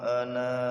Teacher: walaupun ada alifnya ana itu dibaca pendek kecuali waqf